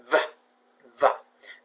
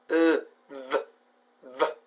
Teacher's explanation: it is called the voiced labiodental fricative